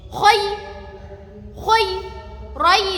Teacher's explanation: kho mencucu nggih